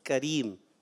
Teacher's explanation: اور کریم میں کاف کو باریک رکھنا ہے، قریم نہیں پڑھنا، کریم، ٹھیک ہے. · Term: کاف باریک